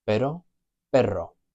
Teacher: that rolling R, that trilled R, and that differentiates the word but, which is pero, from the word dog, which is perro